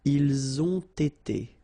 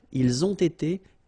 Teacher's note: So same thing here. You get first the liaison z, and then you get the t.